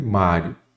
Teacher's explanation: Qual é a sílaba tônica Mário é o má então a sílaba tônica é a penúltima Então ela é uma paroxítona terminada em ditongo se você separar